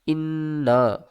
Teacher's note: کو نون سے ملائیں گے، نون مشدد ہے، غنہ کریں گے